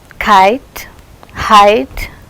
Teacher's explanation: Gliding to a centralized front unrounded vowel just above half close.